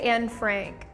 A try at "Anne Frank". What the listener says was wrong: In German, we say Anne Frank. So, you know, we pronounce the E, yeah, Anne. And then Frank. To A, we say A. That's why we pronounce Anne Frank.